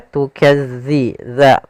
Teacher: makhrajnya agar sempurna kita lafalkan dari ujung lidah kita menempel dengan gigi sari atas.